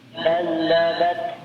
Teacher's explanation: Kemudian kadzabat ya, di sini ada huruf sa sukun ya, berharokat sukun, maka ya ada sedikit aliran nafas yang keluar